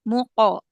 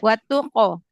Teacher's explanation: Kalau hurufnya huruf tebal seperti qaf dengan to, maka dia qalqalahnya juga tebal.